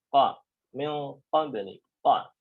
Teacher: dia keluar dari pangkal lidah, ya, pangkal lidah, lidah paling belakang. Nah, dan bunyinya bukan ko, nggak boleh manyun ya, ingat, bukan ko, tapi ka, ka.